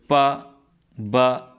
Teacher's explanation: when the Two Lips come closer the bilabial sounds are produced